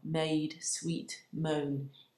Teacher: Each word in that phrase emphasised because it's a stressed syllable. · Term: break in the iambic rhythm